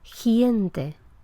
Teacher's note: le parece escuchar «giente» en lugar de «gente», «giente», como si hubiera una «i» entre el sonido consonántico y la «e» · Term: pronunciación palatal